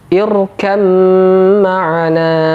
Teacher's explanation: Huruf ba sama sekali tidak dibaca karena dimasukkan ke huruf mim, sehingga mimnya double. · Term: idgham mutajanisain